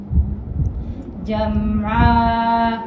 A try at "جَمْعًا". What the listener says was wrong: Lain dengan جمعا. Kita tak buka lebih. جمعا. Itu lebih. Itu mubalaghah.